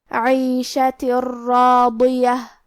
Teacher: کلمت راضیہ، را حروف الادغام میں سے ہے اور ادغام کا معنی ہے حرف کو حرف میں داخل کرنا، تو ہم یہ تنوین کو را میں ملا کے بغیر غنہ سے لیکن تشدید کے ساتھ یہ حکم کو ادا کریں گے